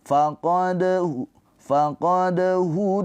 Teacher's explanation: dalnya ini dipantulkan dengan ringan ya dipantulkan sambil mengalir